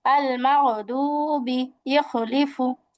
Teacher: হলকের শেষ ভাগ হতে গইন খ